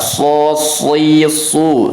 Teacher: kalau huruf shad dia semua kondisi itu tebalnya sama-sama tebal. Sama-sama tebal.